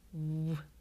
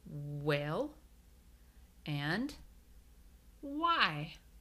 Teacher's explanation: you really don't even hear the H sound you just hear that W